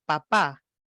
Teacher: percibamos la segunda sílaba como más saliente que la primera sílaba. En lenguaje cotidiano diríamos, la segunda pa es más fuerte que la primera.